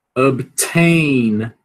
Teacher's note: Então você vai aspirar esse T, por quê? Porque é a sílaba tônica